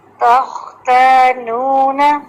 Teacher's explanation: تخ نہیں پڑھنا ہم نے، تخ باریک، خا ہیوی، تو اس میں زبان کی جڑ کو اٹھاتے ہیں